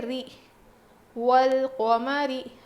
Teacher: را کو باریک پڑھیں گے کیونکہ را پر زیر ہے